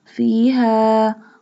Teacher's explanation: We stretch the alif because it has mad. We stretch this short mad up to 3 alif or up to 3 harkat